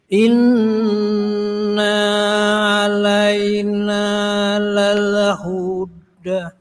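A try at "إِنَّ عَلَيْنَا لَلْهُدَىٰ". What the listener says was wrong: Hati-hati innanya jangan dibaca panjang. Inna alaina.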